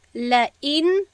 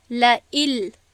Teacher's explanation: گویا در خواندن، در نطق نون حتی شنیده نمیشود. ما به جایی که لئن بگوییم میگوییم لئل. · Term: ادغام